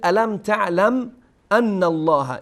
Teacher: اینجا میم ساکن هست اما تشدید روی میم نیست و همچنین پس از میم هم همزه هست، یعنی اینجا نیازی به ادغام یا اخفا یا هیچ چیزی در واقع نیست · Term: اظهار